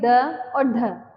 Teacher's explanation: इनकी जो ध्वनि है वो ऐसा लगता है जैसे कि हमारी जीवा से उलट कर के बाहर इनको क्या कर दिया गया हो फेंक दिया गया हो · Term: उत्क्षिप्त व्यंजन